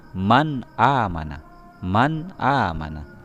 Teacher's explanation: Jadi cara membacanya jelas, nunnya jelas, man amana, jelas dan tidak berdengung ya. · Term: izhar halqi